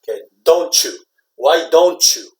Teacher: you hear that CH sound with the T and Y combination